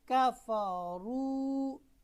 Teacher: را کے اوپر آپ کو جب بھی زبر یا پیش، یہاں پر پیش ہے، جب بھی آپ کو نظر آئے تو را موٹی پڑی جائے گی